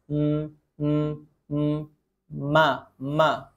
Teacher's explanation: ada disertai dengan dengung tambahan sedikit ke hidung